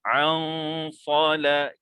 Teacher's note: kita dengung, lidah tidak melekat mana-mana dan kita ready untuk menyebut huruf sad. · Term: ikhfa hakiki